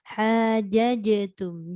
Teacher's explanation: Dia qalqalah ni dia tak ada angin. Dia huruf jim ni dia menahan angin. Hajajatum. Dia lepaskan suara tapi bukannya angin.